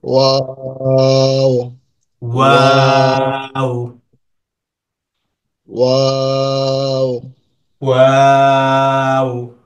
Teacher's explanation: দুই ঠোঁট গোল করে সামান্য ফাঁকা রেখে ওয়া উচ্চারিত হবে। দুই ঠোঁট গোল করে ওয়া উচ্চারিত হবে।